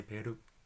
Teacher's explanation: So que is what, quién is who. R, so R, you need to tap the top of your mouth once.